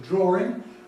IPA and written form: ˡdrɔːrɪŋ (drawing)